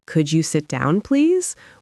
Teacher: with a rising tone on, Please, it's a genuine request.